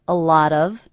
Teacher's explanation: flap T. It sounds like a D. A lot of. That's because it's coming between 2 vowel sounds.